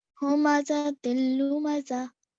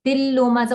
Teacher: So the N sound on the tanween disappeared, right? Now here, this happened, complete assimilation happened with the lam. · All you did was you stressed on it, but there was no gunna. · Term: idgham kamil